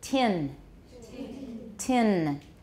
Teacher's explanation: make sure that the tip of your tongue is on your alveolar ridge